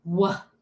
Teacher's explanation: When we do the letter W, we don't have that clear burst of air. W. We do hold it a little bit. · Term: continuous sound